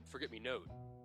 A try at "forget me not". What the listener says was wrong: No, the E is silent. It's forget me not. Forget me not.